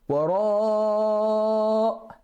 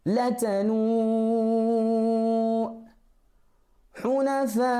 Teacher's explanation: you have to stretch it at least for 4 counts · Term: med wajib muttasil